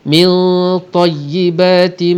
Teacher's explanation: Di sini ada nun mati bertemu dengan ta, ikhfa hakiki. Ikhfa di sini tebal kerana nun mati di sini berjumpa dengan huruf yang tebal. Dahlah isti'la, itbaq pula, maknanya huruf yang cukup tebal, maka dengungnya pun tebal.